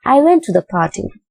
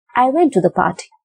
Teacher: the last word, party, is in the falling tone